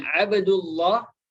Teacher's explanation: maka dibaca tebal alif lam itu atau lamul Marifa itu ketika dia berada dalam lafdzul jalalah